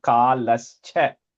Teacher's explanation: It's kalaha cha. That visarga is just becoming an ish.